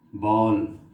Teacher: बॉल, आ और ओ के बीच की ध्वनि है ये। बॉल, हॉल, कॉलेज, नॉलेज, कॉपी, हॉट, कॉफ़ी। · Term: अर्धचंद्राकार